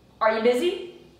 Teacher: So you is not really stressed, so we lose the full word.